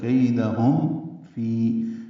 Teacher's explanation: کیدہم کئی یائلین ہے، دال کو جلدی پڑھنا ہے، ہم میں اظہار شفوی، ہونٹ بند کریں گے، آگے فا ہے، میم اور فا کا ادغام نہیں کریں گے۔ کیدہم فی یہ غلط ہے، کیدہم فی یا مدہ ہے، 2 حرکات لمبا ہے۔